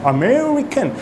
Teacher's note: you really stress in the second syllable and the third and the fourth syllable becomes a lot shorter